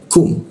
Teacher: Kum huruf K di siku tenggorokan, lidahnya diturunkan sehingga rongga udara terbuka dan ada hembusan udaranya ketika dibaca kum seperti itu.